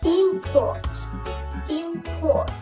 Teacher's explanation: khi mà import là danh từ thì chúng ta sẽ Nhấn vào cái âm Tiết đầu tiên